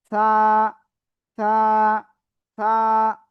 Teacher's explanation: জিহ্বার আগা উপরে দুই দাঁতের আগায় লাগান, লাগিয়ে নরম করে হালকা বাতাস বের করে উচ্চারণ করেন এক আলিফ টান দিয়ে।